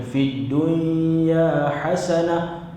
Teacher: Dia tak dengung kerana dia adalah hukum dia izhar mutlak.